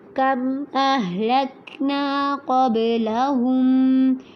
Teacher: قب پہ قوف کو پر کرنا ہے، با پہ قلقلہ کرنا ہے یعنی کہ جھٹکا دینا ہے